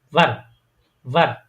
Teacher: আপনার নিচের ঠোঁটের মাঝখানে আপনার উপরের যে দাঁতগুলো আছে সামনের, ওগুলো লাগাবেন। লাগাই নিচের ঠোঁটটা একটু নিচের দিকে ব্যাখ্যা করে তারপর উচ্চারণ করবেন, যেমন ভার, ভার।